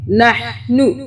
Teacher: نون ہا زبر نح، نون پیش نو، ہا کو حلق سے پڑھیں گے